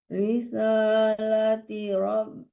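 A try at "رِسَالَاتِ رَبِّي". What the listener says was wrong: Lagi dibaca, tanya fathah bukan kasroh. Risalata rabbi wa nasahtu lakum.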